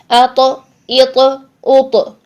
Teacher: तौ को जब हम साकिन हालत में अदा करेंगे तो इसकी आवाज़ को हम हिलाएंगे, अपने मखरज से हिला देंगे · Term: कलकला